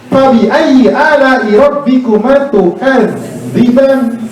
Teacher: Karena zal itu punya sifat namanya rokhawah, mengalir suaranya.